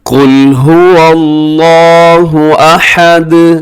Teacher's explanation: قل میں قاف موٹا رکھیے گا